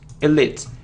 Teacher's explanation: And the stress is on the second syllable.